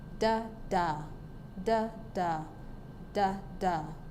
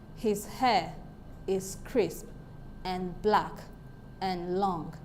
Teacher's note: an unstressed syllable followed by a stress syllable in a line of poetry